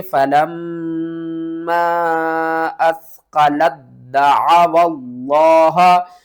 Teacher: یہاں پر دیکھیں 1 2 3 3 حروف آپ نے چھوڑ دینے ہیں، 2 الف اور 1 لام، ان تینوں کو بھی آپ نے چھوڑ دینا ہے